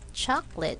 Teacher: looks like three syllables but in speaking we only have two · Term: silent syllables